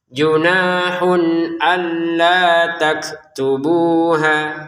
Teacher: keluarkan sedikit napas untuk kaf, hanya sedikit. Bu dan ha masing-masing terdiri dari dua harakat.